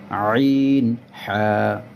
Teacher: দুই নাম্বার মাখরাজ হলকের মধ্যখান হইতে আইন হা